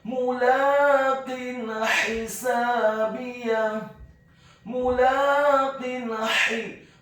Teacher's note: Kemudian kata mulaqin hisabiyah, huruf mimnya dibaca dhammah 1 harokat. Kemudian huruf lam atau lam alifnya dibaca tipis fathah 2 harokat karena harokatnya tegap. Atau ketika hurufnya adalah lam alif maka dibaca 2 harokat meskipun harokat fathahnya bukan harokat yang tegap.